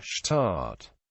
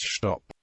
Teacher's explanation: True to its Gaelic origins in a manner similar to parts of Connacht, S maintains the SHH sound